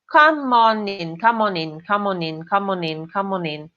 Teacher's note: Esse N de on vai juntar com in.